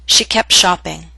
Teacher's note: But in fast and formal speech, we drop the T in that consonant group. The consonant group is P, T, Sh.